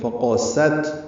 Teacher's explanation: قاف موٹا پڑھیں گے، سین پتلا پڑھیں گے. فقست، تا ساکن ہے، یہ باریک پڑھا جائے گا، اس پہ حمز ہے.